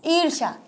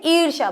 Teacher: बड़ी ई आएगी इसलिए थोड़ा सा ज्यादा हमें बोलना है अधिक समय लगाना है क्योंकि ये दीर्घ स्वर है